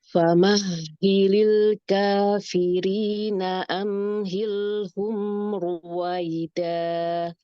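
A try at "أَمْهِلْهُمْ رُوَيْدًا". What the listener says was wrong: Umi kalau bacanya gini, suara mimnya tebal. Amhilhum. Balikin tenang ya, nggak perlu tarik kuat-kuat. Itu terlalu tarik ya. Biasa aja, normal mulutnya.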